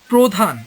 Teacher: রফলাযুক্ত আদ্য অ এর উচ্চারণ ও এর মতো হয়।